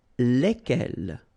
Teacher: So final S is not pronounced.